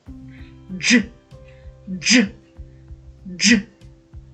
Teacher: Довго протягнути звук дж ми не можемо. Ниточка зразу рветься, хоч і чуємо два звуки, але вимовляємо злино як один.